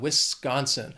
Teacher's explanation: This state has 3 syllables, and the stress is on that second syllable, that con